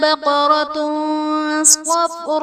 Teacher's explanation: بقرۃ صفراء میں تا پر دو پیش کی تنوین، تنوین کے بعد حروف اخفا میں سے صاد ہے تو یہاں پر اخفا کا قاعدہ ہوگا، یعنی تنوین میں ہم غنہ کر کے پڑھیں گے۔ صفراء میں صاد حرف مصطلیہ ہے پر پڑھا جائے گا، صفراء الف سے پہلے زبر الف مدہ کا قاعدہ اور حرف مدہ کے بعد حمزہ اسی کلمہ میں ہے تو یہاں پر مد متصل کا قاعدہ ہوگا۔